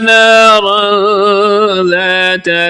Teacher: یہاں پر اخفا ہو رہا ہے، آواز کو ناک میں چھپا کر پڑھیں گے۔